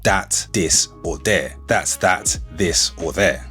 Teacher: the TH can oftentimes become a D